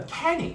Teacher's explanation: K의 강세가 있습니다. 그러면 K를 강하게 하다 보면 앞에 있는 미가 잘 안 들리겠죠. 자, 보통 mechanic 이런 식으로 발음하고요.